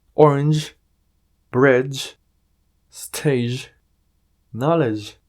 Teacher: Este sonido que generan las palabras terminadas en g, e, es como cuando le pedimos silencio a alguien siendo descortés. Sh, con un poquito de vibración